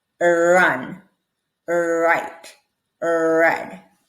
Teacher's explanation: the tip of my tongue could not touch the top so practice with a pen a clean pen um if you